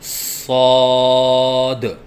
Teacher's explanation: صاد کی ادائیگی کے وقت زبان کو دونوں دانتوں کے درمیان لائیں اور سیٹی کی آواز نکالیں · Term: حرف صاد